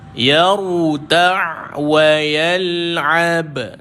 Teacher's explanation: dia bukan Hamas huruf jahar dia tidak dikeluarkan angin